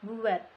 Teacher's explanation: jika berada di akhir kata, fonem T tidak diucapkan lepas. Bibir kita masih tetap rapat tertutup saat mengucapkan bunyi.